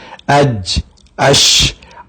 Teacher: یہ حرف شجری ہیں جو زبان کے درمیان سے ادا ہوتے ہیں